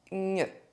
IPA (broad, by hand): ɲ